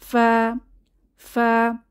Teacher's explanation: সময় আমাদের মুখ থেকে বাতাস বের হয় ফা ফা ফা তাহলে উপরের দুই দাঁত এবং নিচের ঠোঁট থেকে ফা উচ্চারিত হয়